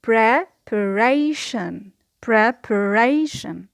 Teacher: The secondary stress here is on the first syllable